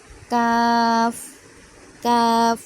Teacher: জিহ্বার গোড়া হতে একটু আগে বাড়িয়ে তার বরাবর উপরে তালুর সঙ্গে লাগিয়ে উচ্চারিত হয় কাফ